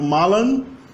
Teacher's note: esses infinitivos que terminam com A, automaticamente o A final é nasalizado. Então malan, beber, presente, geralmente é formado com ablaut, com a mutação vocálica.